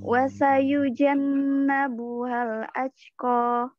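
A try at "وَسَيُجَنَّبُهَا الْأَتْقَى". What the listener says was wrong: Nah, jangan aj, tapi at. Jadi bukan at.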